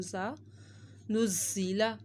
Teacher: زا دو دفعہ پڑھا جا رہا ہے اور زا کی سیٹی بھی نکالنی ہے